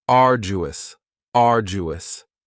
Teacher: Next is arduous, and arduous has 3 syllables, and the stress is on the first syllable, arduous. Now, you don't hear that D sound that much. It's not very strong. It almost sounds a little like a J.